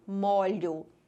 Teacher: Vejam que a primeira pronúncia, a letra O saiu fechada, molho. E a segunda pronúncia, a letra O saiu com o som aberto, molho. Então, se trata de palavras homônimas homógrafas.